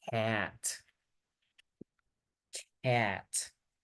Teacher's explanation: Tengo que pronunciar primero la E y luego la A.